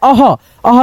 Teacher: चलिए यहाँ पे दोस्तों आपका लास्ट होता है अह, अह की मात्रा ऐसे होता है दो विसर्ग में, और ये दो विसर्ग कहने का मतलब है इसका उच्चारण आधा ह में होता है